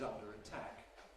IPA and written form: ˈʌndər ə ˈtʰæk (under a tack)